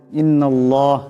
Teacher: লামের ডানে পেশ আসছে এটা আল্লাহর লামকে মোটা করে পড়তে হবে এখানে নুনের উপর তসদিদ আছে নুন মুশাদ্দাদের এখানে পরিমাণ গুন্না হবে · আল্লাহর লামের ডাইনে জবর আসছে আল্লাহর লামকে মোটা করে পড়তে হবে